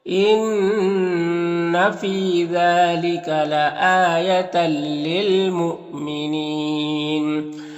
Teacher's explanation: یہاں پر حمزہ ساکنہ ہے تو جھٹکا لگتا ہے حمزہ ساکنہ کا پڑھنے میں، واو کی شکل میں ہے، یہاں پر وقف کی صورت میں مد عارض وقفی ہوگا، تو اس طرح سے پڑھیں گے۔